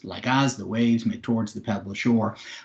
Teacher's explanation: every second syllable is stressed. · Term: iambic pentameter